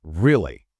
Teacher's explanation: We use this to express surprise or strong feeling or emphasis like, really. It goes up and then down. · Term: rise-fall intonation